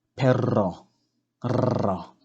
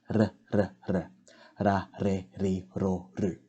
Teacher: We just want to have a very short or soft rolled R sound.